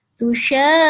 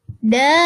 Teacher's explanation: Mad lazim kilmi mutsaqqal atau mad lazim mutsaqqal kilmi adalah bertemunya huruf mad dengan huruf bertasydid dalam satu kata. Panjangnya 6 harokat.